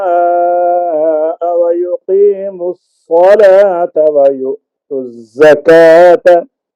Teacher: حنفاء یہ درمیانی مد ہوگی 2 سے 3 الف تک